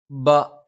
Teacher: ബ രണ്ട് ചുണ്ടിൽ നിന്നാണ്. മേലെ ചുണ്ട് അല്പം പുറത്തേക്കും താഴെ ചുണ്ട് അല്പം ഉള്ളിലേക്കും ചേർന്ന് നിൽക്കും.